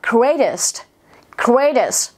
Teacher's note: Âm t sẽ đọc thành âm d